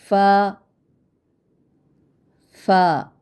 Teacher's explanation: ऊपर के दांत यानी सनाए उलिया के सिरों को निचले होंठ के गीले हिस्से पर लगाकर कैसी आवाज़ है इसकी? बारीक आवाज़ में पढ़ते हैं। याद रखिए कि फ़ा की अदायगी में ज़्यादा सांस ना निकालें, यानी हमको फ़ा फ़ा फ़ा इस तरह से नहीं अदा करना।